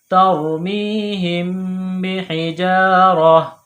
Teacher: جب وقف کریں گے سٹاپ کریں گے تو گول تا کو ہا سے تبدیل کریں گے